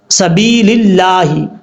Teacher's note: اب اس کے بعد ہے سبیل اللہ، سین زبر سا، با یا زیر بی، لام لام زیر لل، لام کھڑا زبر لا، حاضر ہی، للہ۔ با کے بعد یا مدہ ہے، یا ساکن سے پہلے کیونکہ زیر آ رہا ہے تو ایک الف کی مقدار لمبا کر کے پڑھیں گے۔ اب یہاں پر سمجھنے والی بات ہے، لفظ اللہ ہے، لفظ اللہ سے پہلے یہاں پر زیر ہے، تو لفظ اللہ سے پہلے زبر یا پیش ہو تو لفظ اللہ پر پڑھا جاتا ہے، اگر لفظ اللہ سے پہلے زیر ہو تو لفظ اللہ بریک پڑھا جاتا ہے۔